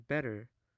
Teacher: a tapped or flapped tea as in better in American English